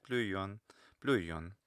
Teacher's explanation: there's a little bit of a glide there, it's a little bit diphthongized